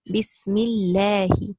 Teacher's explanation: you have a kasra before lafzul jalala, so it will be light.